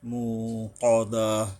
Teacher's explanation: বড় কফ আসছে, যে হলকের গোড়ার থেকে শক্তভাবে আদায় করতে হবে।